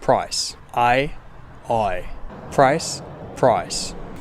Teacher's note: In many Australian accents, instead of starting as a, it starts as o. So instead of i, you get oi. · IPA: /pɹɒɪs/